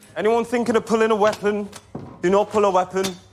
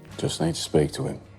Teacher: Dropped H's and G's. Him becomes 'im,